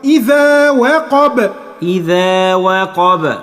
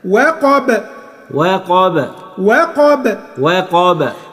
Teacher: القاف هنا مفتوحة، بدام القاف مفتوحة يبقى مفيش قلقلة، لكن الباء مفتوحة بس هتسكنها يبقى نعمل قلقلة